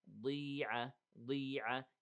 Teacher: Here the ضاد is heavy, but not all the way